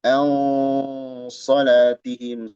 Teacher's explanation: au di sini ikhfa tapi tebal gunnahnya